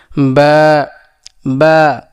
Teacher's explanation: তাহলে বা উচ্চারণ হবে কোথা থেকে? বা উচ্চারণ হবে দুই ঠোটের ভেজা অংশ থেকে।